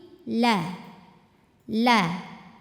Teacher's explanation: huruf lam ujung ee tepi lidah ke gusi gigi serari atas